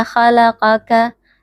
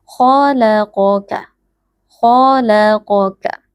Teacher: k tebal lam tipis Q tebal Kaf tipis